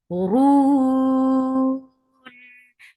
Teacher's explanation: This temporary sukun has turned this two count long vowel into four. This is madad sukun.